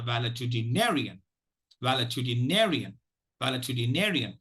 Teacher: primary stress is on the fifth syllable nay the secondary stresses on the first syllable Val